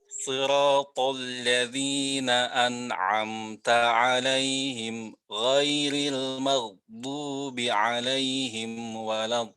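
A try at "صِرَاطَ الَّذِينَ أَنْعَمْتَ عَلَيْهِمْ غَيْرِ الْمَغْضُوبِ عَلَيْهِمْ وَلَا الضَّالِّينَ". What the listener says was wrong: Ya, kekurangan pada huruf mim seperti dipotong. Siratal ladzina an'amta 'alaihim ghairil. Itu kayak dipotong. Padahal mim itu ada Tawasutnya ya. Ghairil maghdubi alaihim walad. Terus tadi rokhawah pada huruf ghain dan dha kurang. Ghairil maghdubi alaihim walad. Huruf dha-nya juga masih agak sedikit kurang. Tapi ini tidak masuk lahan yang membatalkan sholat.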